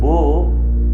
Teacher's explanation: ब या वर्णाचा उच्चार गालावर आपण तळहात ठेवून ब असा उच्चार केला तर कंपन जाणवतात